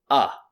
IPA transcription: ə